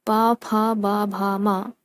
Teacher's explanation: प फ ब भ म ओष्ठ से उत्पन्न होने वाली ध्वनियाँ हैं, अर्थात ओठ से उत्पन्न होने वाली ध्वनियाँ हैं।